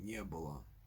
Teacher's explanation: the expression не было, which is stressed on the ye in не, with no stress on the word было, even though the word было is normally stressed on the u.